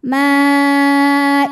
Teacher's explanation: berharakat fathah kemudian hamzahnya yang i sama-sama ada dalam kata maidatam maka mimnya dipanjangkan boleh empat boleh lima harakat tidak boleh dua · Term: mad wajib muttasil